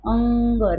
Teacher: अम की मात्रा, और या उसको कहते हैं अनुस्वार। अनुस्वार का उच्चारण करते समय हवा केवल नाक से बाहर निकलती है।